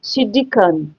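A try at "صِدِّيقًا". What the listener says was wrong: non, mets deux temps sur le del.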